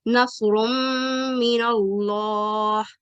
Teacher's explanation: आवाज नाक की जड़ की तरफ जाती हुई हुन्ने की शक्ल इख्तियार कर लेगी और इसे 2 हरकत जितना वक्त दिया जाता है · नून साकिन या तनवीन की आवाज नाक की जड़ की तरफ जाती हुई गुन्ना की शक्ल में 2 हरकत के बराबर लंबी होती है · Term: इदगाम नाकिस